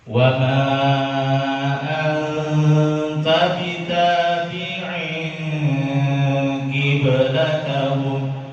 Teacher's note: Bitabi'in bertemu dengan qiblatahum, qafnya kasroh. Ketika qaf itu kasroh, ketebalannya turun dia. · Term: qaf yang kasroh